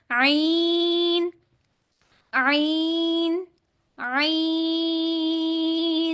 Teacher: तीसरा मखर वस्त हलक है यानी हलक का दरमियानी हिस्सा यहां से दो हरूफ ईन और हा निकलते हैं